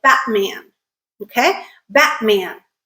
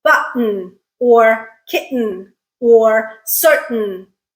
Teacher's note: it is the T that is not produced in a word like Batman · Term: glottal stop